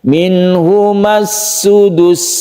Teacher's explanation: sudus ini dipendekkan, tapi jangan ditekan karena sin itu tidak ditekan. Minhumas sudus, jadi dia berdesir.